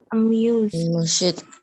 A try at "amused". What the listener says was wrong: it's not amused. It's not amused. The E is very, very small. Amused.